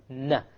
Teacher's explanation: noon and lam the noon you actually use the tip na you connect the tongue to the molar behind the canines you have the noon